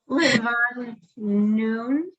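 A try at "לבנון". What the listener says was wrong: Not noon.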